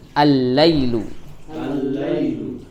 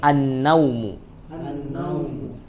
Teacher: alif lam di sini melebur ke huruf setelahnya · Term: alif lam syamsiah